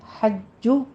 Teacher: کہنا ہے، یہ چھ کی آواز نہیں آنی چاہیے، جیم میں حمس نہیں لانا، قوی آواز کے ساتھ ادا کرنا ہے